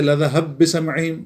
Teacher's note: با کا با میں ادغام ہو رہا ہے